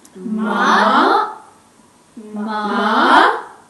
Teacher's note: The third tone falls and then rises again. When pronounced clearly, its tonal dipping is very distinctive. · The second tone rises moderately. In English, we sometimes associate this rise in pitch with a question.